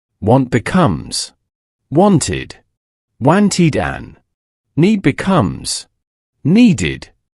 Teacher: The special exception if the base verb already ends with the sound of t or then adding another t or right after it is very difficult for the mouth to say try to say dwanty quickly it's awkward so to solve this the English language inserts a small vowel sound the e sound to act as a bridge between the two similar consonants. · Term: extra syllable